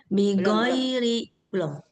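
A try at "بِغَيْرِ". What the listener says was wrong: Itu sudah seperti go bahasa Indonesia. Bighairi di ujung lidah. Oke, jadi kayak kita mau mengucapkan huruf kho, karena gho dengan kho ini satu makhraj, tetapi nggak ada suara dahaknya. Bighairi. Harus bersih deh.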